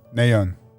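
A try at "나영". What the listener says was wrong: Nayoung. Yeah, but I still say it with the letters in place. You literally dropped a G. You dropped a G.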